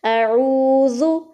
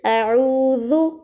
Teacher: ذال کو نرمی سے ادا کرنا ہے۔ کس طرح سے کہ اپنی زبان کو اوپر والے دانتوں کے ساتھ ٹچ کریں گے